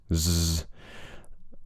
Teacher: Next we've got a Z consonant, even though it's written as an S, there should be some vibration in the throat, z, and that syllable is stressed, so z, and that's a short I vowel.